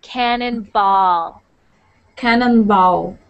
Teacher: when you say ball I don't want to hear bow